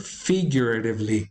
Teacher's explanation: figuratively is accented on the first syllable